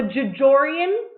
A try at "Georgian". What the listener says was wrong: I think that's too many G's. I think it's Georgian.